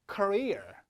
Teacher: 강세 위치가 중요합니다. 2번째 음절 career 이렇게요.